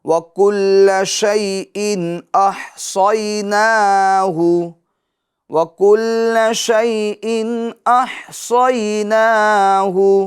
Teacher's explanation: اچھا شیئن تو شیئن کی تنوین کے اندر اظہار ہوگا، ٹھیک ہے، گنہ نہیں کریں گے